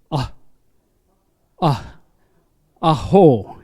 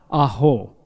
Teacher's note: it is the vocal cord closed with the vowel sound A. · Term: glottal stop